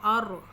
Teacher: اور یہ را کے پیچھے زبر ہے، را کے پچھلے والے لفظ پہ زبر ہوگی اور را کے اوپر جزم ہوگی، تو ہم ہمیشہ تھوڑا سا اس کو موٹا کر کے پڑھیں گے را کو